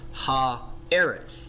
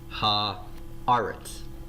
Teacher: So when Charles Grieve from Animated Hebrew on that little handout we have, when he refers to this as harmonization, what he's saying is that this vowel is harmonized, the vowel of the noun is harmonizing with the vowel of the article